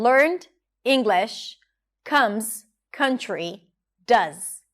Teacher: The stressed words are longer and higher in pitch and everything in between is squeezed together and reduced